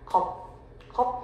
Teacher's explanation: 파열되지 않고 정지하는 거예요. 공기 머금었다가 정지하는 거. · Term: 불파음